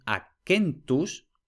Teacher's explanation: aunque la vocal sea breve como la sílaba está cerrada termina en consonante Eso hace que la sílaba ya sea larga por tanto también es esa sílaba la que lleva el acento